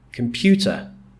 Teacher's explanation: The stress, which is the strongly pronounced part of the word, like in computer, then the stress is on pew, computer.